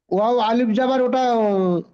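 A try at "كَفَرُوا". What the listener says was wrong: ও আলিফ ধরতে হয় না। আলিফ পড়তে হয় না। ওয়াও এর আগে সাকিন এসে ওয়াও এর উপর সাকিন আছে। তো সাকিন ওয়াও সাকিনের আগে পেশ আইলে তো ওয়াও মাদ্দা হয়। তো র ওয়াও পেশ রু পড়তে হবে। ওয়াও মাদ্দা হচ্ছে না।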